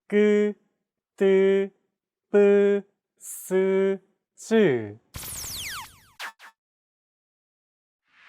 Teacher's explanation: Tense consonants, also known as double consonants, are pronounced with a stiffer voice. More pressure is built up and it's released much more quickly than plain sounds.